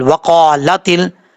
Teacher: تا کو جب لام سے ملائیں گے الف تو گر جائے گا، لیکن لام میں قلقلہ نہیں کرنا۔